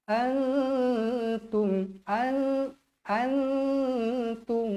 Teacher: Nun bertemu huruf ta ikhfa Hakiki dua harakat dengung